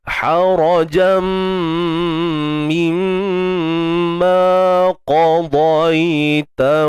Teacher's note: Harajam mimma qadaita, huruf qaf tebal, huruf dha tebal, dua-dua tebal. Qadaita, dai matikan ya ni dengan sifat lunak, bacaan lin lunak je, lembut je bunyi dia tu.